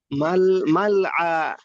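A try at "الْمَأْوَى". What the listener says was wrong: আবার লাম হয়ে গেল সেই মাল আ।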